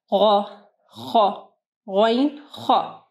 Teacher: آپ کی زبان کا جو اینڈ ہے، آخری حصہ ہے، وہ اوپر ٹچ ہوگا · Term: ادنا حلق